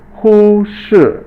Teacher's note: Hu is first tone and shi is fourth tone